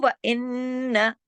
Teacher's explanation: تشدید کی وجہ سے غنہ کیا لیکن آواز کو بڑھانا نہیں، الف نہیں لگانا، الف اس میں نہیں ہے.